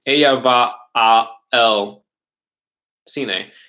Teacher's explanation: So if I say ella va a el cine, that a el, you have to make a vocal stop in your throat between the two vowel sounds